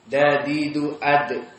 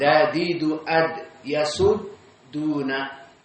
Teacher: dal makhrajnya dadidu ad, di atraf lisan dengan usul asanaya al-ulya atau dekat kepada gigi seri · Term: muraqqaqah